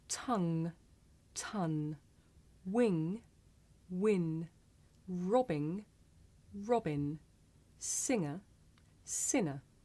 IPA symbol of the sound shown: ŋ